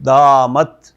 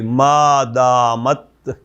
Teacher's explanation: یہ جو تا ہے اس پہ بھی آپ اپنا منہ دوبارہ کھولیں گے نا، زبان کو چھوڑیں گے. دامت، ہلکی سی ساؤنڈ آپ کو جیسے نا نکلتی ہوئی نظر آئے گی.